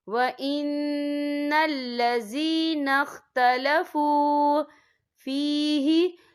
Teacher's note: واو ساکن سے پہلے پیش ہے تو ہم یہاں 2 یا 3 حرکت کے برابر کھینچ کے پڑھیں گے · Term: واو مدہ